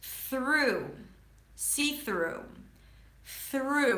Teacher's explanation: Make sure that the tongue is out for the th and then you pull it in for the r.